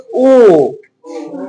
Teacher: कंठोस्थ माने कंठ का भी प्रयोग रहेगा और ओष्ठ का भी प्रयोग होगा इसमें। तो जैसे बोलो ओ तो ओ अंदर से हवा आ रहा है।